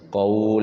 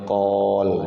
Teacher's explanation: Qaul, jadi mad layyin, qaul, jangan qol ya, qaul pakai u.